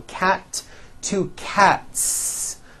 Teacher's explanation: again the S ending is unvoiced